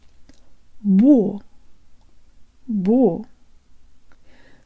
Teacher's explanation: Jaw slightly forward, tip of the tongue behind the bottom teeth, lips rounded and protruded. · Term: Russian default mouth position